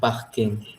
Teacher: une consonne sonore, nasale, occlusive et dorsovelaire. Ce son apparaît principalement dans les mots d'origine anglais comme parking.